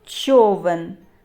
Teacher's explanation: перший звук ч - це твердий приголосний позначаємо однією рискою що О голосний позначаємо кружечком човен в твердий приголосний позначаємо однією